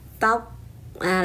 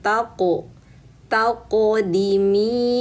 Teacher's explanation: Qof sukun qalqalah. Maka naikkan pangkal lidahnya dulu. Tahah. Lalu lepaskan.